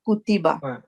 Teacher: काफ के ऊपर दम्मा है, इसको हमने 1 सेकंड पढ़ना है। ता के नीचे कसरा है, इसको भी 1 सेकंड, और बा के ऊपर फता है, इसको भी 1 सेकंड। ये 1 सेकंड का रूल है कुतिबा।